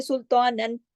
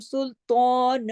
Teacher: ہم کھینچ رہے ہیں نا 2 حرکات تک، تو یہ مد عوض ہے